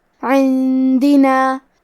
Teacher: کلمت عندنا میں نون ساکن ہے، پھر حرف الدال ہے، دال حروف الاخفاء میں سے ہے لہذا ہمیں یہ حکم کو غنہ کے ساتھ ادا کرنا ہے